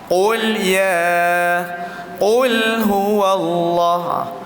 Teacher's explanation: Lam jangan kita muncungkan jadi tebal. Malahan sifatnya dia tu adalah nipis. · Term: Lam yang mati